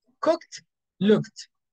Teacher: it's going to be with T because K doesn't vibrate here, so it's a voiceless, we use T